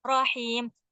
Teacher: Ra-nya ingat, nggak tebel banget, juga nggak dimajuin.